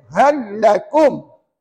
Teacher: Sebab Dia bukan mim dengan Nun jadi tak boleh baca bunyi sengau pula kat situ jangan bunyi sengau peranpuan ya baca gini aja hakumakum dah cukup